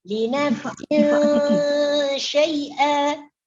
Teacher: Hukum bacaan tanwinnya disembunyikan ke dalam huruf shin. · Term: Ikhfa hakiki